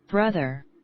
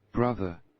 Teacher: The difference is that American accents clearly pronounced the R at the end, while British accent sounds softer and the R is almost silent